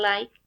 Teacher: the tongue comes into contact with the alveoli, is alveolar, and articulation mode lateral approximant.